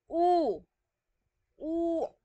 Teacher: Yung posisyon ng dila natin nasa taas pero nasa likod.